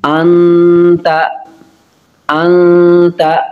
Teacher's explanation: نون ساکن کے بعد تا حروف اخفا ہے، اس لیے غنہ کریں گے